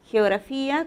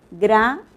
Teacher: primero es la fricativa velar y al final, gra, en la sílaba gra, estamos pronunciando el fonema oclusivo velar.